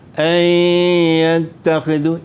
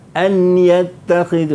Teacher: Idgham ni dia masukkan huruf yang pertama tu ke dalam huruf yang kedua. Jadi nun tak bunyi lagi lah.